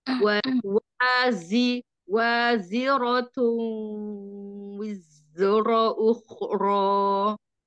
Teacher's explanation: Huruf zai itu bukan huruf kol-kola, jadi tidak memantul. Tapi dia ada rohwa, rohwa, wiz, ada jahar juga.